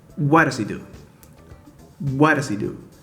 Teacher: Notice how I say E instead of he. It's very common that the pronouns he, her, him drop that H sound.